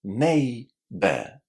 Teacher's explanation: In international English, we pronounce the letter R. But because my accent is British, in situations like these, I don't normally say the R.